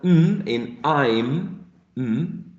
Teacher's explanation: which is voiced bilabial and nasal